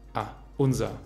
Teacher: Als nächstes kommen die reduzierten Formen von unser. Zunächst einmal haben wir in unser das a-schwa am Ende.